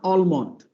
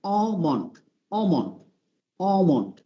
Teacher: এটা প্রথমটা একটু অ লম্বা টান, পরে মন্ড, ডাইরেক্ট মন্ড